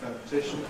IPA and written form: ˌfəʊnɪˈtɪʃn̩ (phonetician)